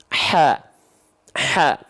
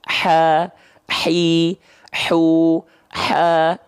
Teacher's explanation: Mengalir nafasnya, karakteristik nafasnya adalah berbisik. Atau seperti orang yang lagi kepedesan, makanya ada yang bilang juga hak pedas. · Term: hams